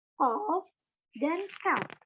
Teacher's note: Yang pertama, ada pada pangkal lidah dihimpit ke langit-langit atas. Huruf yang keluar dari pangkal lidah yang dihimpit ke langit-langit atas ada 2, yakni qaf dan kaf.